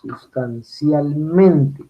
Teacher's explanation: Cuando es sustancialmente, como es una palabra compuesta, entonces el acento recaería sobre el mente, ya no está en el cial, sino en mente